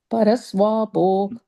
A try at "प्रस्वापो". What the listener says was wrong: First line after the comma, praswapo. Praswapo. You said paraswapo, praswapo.